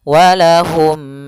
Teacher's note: Mim mati ketemu ain harus jelas yaitu izhar syafawi mimnya tidak boleh ditahan